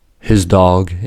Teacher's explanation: The D in dog is a voiced sound, so the S in his dog is assimilated to the voiced Z sound.